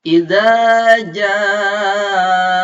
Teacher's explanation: za, lidahnya disimpan di ujung gigi atas. Kalau ja, tengah-tengah lidah disimpan di tengah-tengah langit-langit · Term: makhraj huruf za